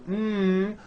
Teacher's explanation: closing off your nose you see you cannot do it because the M sound comes out of your nose it's a nasal sound